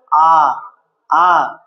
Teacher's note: আ উচ্চারণ করবি, তখন দেখবি জিভটা নিচে থাকে